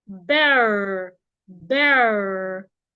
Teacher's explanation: The vowel in between in the American English is pronounced er. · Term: American pronunciation